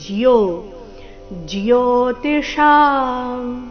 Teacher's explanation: ಇಲ್ಲಿ ಜೋ ಅಂತ ಇಲ್ಲ ಜ ಅಧಿಕ ಯೋ ಸೇರಿ